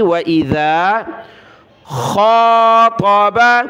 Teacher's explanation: ذال پر زبان نکالی